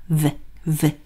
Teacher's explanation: 입술을 살짝 깨문 상태에서 비읍 소리예요